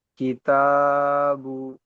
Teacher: তায়ের উপর খাড়া জাবার এসছে, খাড়া জাবারটি হচ্ছে আলিফ মাদ্দা সমতুল্য, তাই একে এক আলিফ পরিমাণ টান দিয়ে পড়তে হবে।